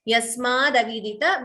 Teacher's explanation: So the t and a, instead of that, you get da.